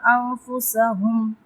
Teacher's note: انفسهم نون ساکن کے بعد فارا ہے تو یہاں پہ ہم اخفا کریں گے یعنی آواز کو ناک میں چھپائیں گے نون ساکن کی